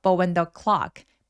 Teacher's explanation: when도 사실 엄청 강세를 주는 그런 단어는 아닙니다